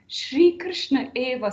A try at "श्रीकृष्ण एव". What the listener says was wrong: So here there is a visarga lopa. Shri Krishna eva, Shri Krishna eva. Softer, less energy, better flow.